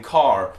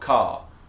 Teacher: it's also an accent that is rhotic so you'll hear people saying car and not cah